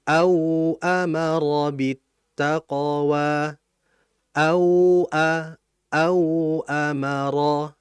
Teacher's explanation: Au a au amara, dialirkan wawunya. Dan dalam alirannya vokalnya itu au, u ya, bukan ao, bukan o. Nah, makanya di antara kesalahan dalam membaca lin ini adalah pada waw mati adalah vokal akhirnya o, harusnya u.